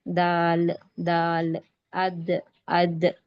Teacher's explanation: जबान की नोक और ऊपर दांतों की जड़ यानी जबान की नोक ऊपर दांतों की जड़ को जब मिलती है तब दाल का मखरज अदा होता दाल की आवाज पैदा होती